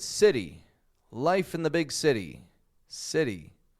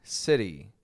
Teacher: Now, sometimes we do this in the middle of a word, like in the word city, life in the big city, city. When we say city, we make a flap T because we just roll that T a little bit.